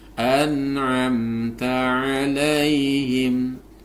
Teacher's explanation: An'am, nun sukun bertemu dengan ain, maka ini harus dibaca jelas. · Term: idhar halqi